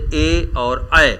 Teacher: इनके उच्चारण में कंठ से भी आवाज़ आ रही और तालु से भी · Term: कंठ तालव्य